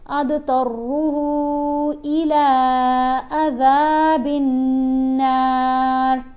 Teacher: हा को हमने 3 अलिफ जितना लंबा पढ़ा.